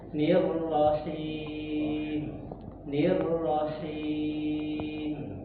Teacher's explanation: Jangan terkesan huruf H-nya itu bertasydid.